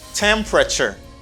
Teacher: the stress is in the first syllable